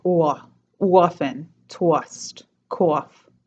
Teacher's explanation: for the O sound, like in thought or cloth, that's turning into a diphthong as well.